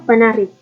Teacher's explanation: P dengan bunyi hambat bilabial tak bersuara